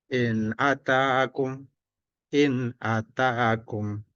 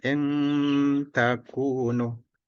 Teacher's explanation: jadi tidak dibaca dengung, tapi dibaca biasa karena bertemu huruf alif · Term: izhar